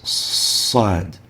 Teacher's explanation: articulates between the incisors and the tip of the tongue where it leaves an area for a whistling sound and that's why we call it lingual whistle letter saad there